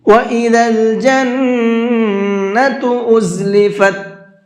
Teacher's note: جنہ کے نون کے اوپر تشدید ہے تو یہاں بھی غنہ کریں گے